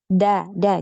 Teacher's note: Jadi jangan ada nafas, ya, yang ngalir ketika mengucapkan hurufnya. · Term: huruf dal